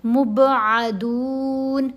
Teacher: قلقلہ یعنی با کو ہلانا ہے، مب. پھر آئین کو گلے کے درمیان والے حصے سے ادا کیجئے